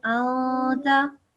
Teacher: you have to make a nasal sound here. It's a noon sakina